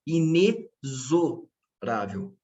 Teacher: Poucas vezes que a gente ouve essa palavra, quem fala pronuncia inexorável. E não, a forma correta não é com som de KS, mas sim o som de Z.